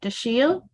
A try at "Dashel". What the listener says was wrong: You did, but that's okay. My name is Dashel Leeds. The I is silent, so it's very confusing.